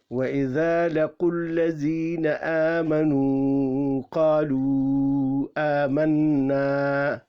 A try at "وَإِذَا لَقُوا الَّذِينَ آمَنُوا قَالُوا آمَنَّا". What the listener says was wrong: یہ آپ نے لمبا کیا یا کو نہیں الف نہیں، یہ لمبا نو کو نہیں، یہ اس پر مد ہے نا. آ ای او کے بعد الف آئے تو پھر مد پڑیں گے. یہاں دیکھو لو کے بعد حمزہ ہے نا، تو یہاں مد آتی ہے. یہاں لمبا نہیں کر سکتے، یہاں مد ہے.